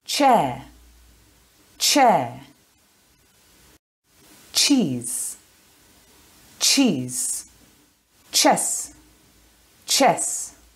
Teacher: this is an unvoiced sound so we don't use our voice box it's only air coming out of your mouth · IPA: tʃ